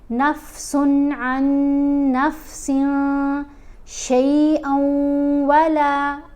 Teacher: پھر سین کے نیچے 2 زیر ہیں، یعنی تنوین ہے، اس کے بعد شین، شین حروف اخفا میں ہے، تو ہم نے یہاں سن نہیں پڑھنا، نفسن نہیں پڑھنا، نون کی آواز کو ناک میں چھپا کر پڑھنا ہے